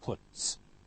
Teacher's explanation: t, voiceless, so followed by also voiceless s, puts.